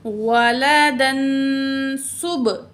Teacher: क़ालू इत्तख़ज़ल्लाहु वलदन, वलदन तनवीन के बाद सीन हरूफ इख्फ़ा में से है, तो यहाँ तनवीन की आवाज़ को नाक में छुपा के पढ़ेंगे